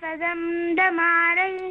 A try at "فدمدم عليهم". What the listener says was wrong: لماذا تغنين الميم؟ لا تغني الميم. فدمدم، فدمدم عليهم.